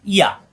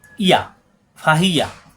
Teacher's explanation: জিব্বার মাঝখানে উঠে তালুতে লাগবে